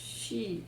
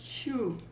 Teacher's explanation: middle of the tongue touches the upper hard part of the roof of the roof of our uh mouth. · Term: sheen